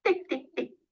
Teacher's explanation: practicing that t sound and pushing that little burst of air through her teeth with her tongue